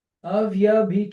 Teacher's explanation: o N retroflexo por causa do R anterior